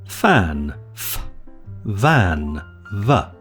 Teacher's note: The f and the v sound are labiodental fricatives, made by disrupting the airflow through a narrow channel formed by the lips and teeth and thereby causing turbulence.